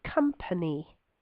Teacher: the e sound at the end of company is very brief it's still that e and